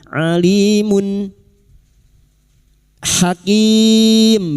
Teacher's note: duma tanwin dibaca jelas tanpa mendengung